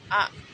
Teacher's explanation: Terus bunyinya itu lembut, bersuara tipis dan panjang.